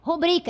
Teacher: É uma palavra paroxítona. A sílaba tônica é a penúltima sílaba. Aqui o K é a última e bri é a penúltima. · a ênfase na segunda sílaba do bri, sendo uma palavra paroxítona, certo? Esta palavra, corretamente do ponto de vista da norma culta, é rubrica, é uma palavra paroxítona.